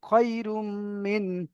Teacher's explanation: তানবিনের পরে মিম এসেছে, তাই তানবিনকে মিমের সাথে মিলিয়ে একালি পরিমাণ গুণনা করে পড়তে হবে।